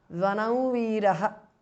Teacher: Vanam ends in Anuswara followed by Va, Veeraha. So the Anuswara changes to the nasal of Va.